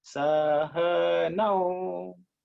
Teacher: This A U come together. But Au is at the top, as slightly at a higher pitch.